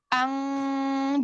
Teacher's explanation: kalau ikhfa Q dan Kaf itu dia 100 persen udaranya naik ke hidung Ang jadi di mulut ini tidak ada udara yang keluar Ang